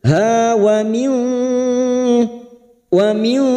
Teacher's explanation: Kita samarkan bunyi nun sukun dan mendengung selama 3 harokat. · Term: ikfa hakiki